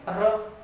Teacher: प्रकंपित ध्वनि, जिसमें हम बोलते हैं तो बोलते हुए कंपन होता है।